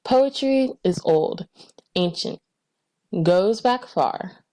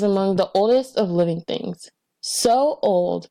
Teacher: So they have this continuation of the long vowel O sound